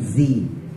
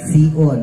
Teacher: Zai sama Sin memang makrajnya sama ya sama-sama di bawah antara gusi bawah sama gigi bawah